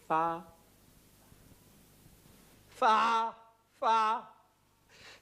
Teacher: L'F, en appuyant les dents d'en haut sur la lèvre de dessous.